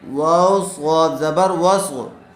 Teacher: صاد کو پر کر کے پڑھیں گے